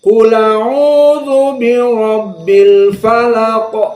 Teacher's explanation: Maknanya Hamzahnya dihapus, harokat Hamzahnya dipindahkan kepada lam yang sukun, menjadi berharokat. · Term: an-naql